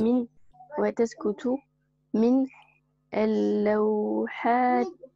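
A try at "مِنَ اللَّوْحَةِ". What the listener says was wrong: Ti. Bon, là, tu as fait une pause, donc tu as bien prononcé le alif. Mais si, ah oui, voilà, c'est la shamsiya parce qu'on ne prononce pas l'alif justement. On dira minal lawhati. Minal lawhati. On passe du na au la. Minal lawhati.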